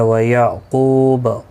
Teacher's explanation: قاف یہاں پر بھی مستعلیہ ہے، پر پڑھا جائے گا